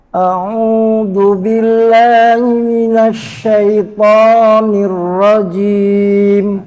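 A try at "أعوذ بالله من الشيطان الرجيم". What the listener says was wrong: Kalau ta fathah jangan pakai to. Minasyaitan.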